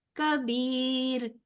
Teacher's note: را پر نہیں پڑھا جائے گا، باریک ہوگا، کیونکہ را ساکن ما قبل زیر ہے